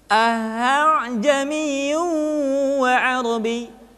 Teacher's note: Tashil adalah pengucapan hamzah yang kedua di antara sifat hamzah dengan alif · Jadi tidak dibaca a'jamiyun atau a'jamiyun, tapi hamzah kedua dibaca dengan suara yang samar